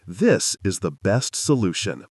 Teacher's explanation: Now say it with a falling pitch at the end.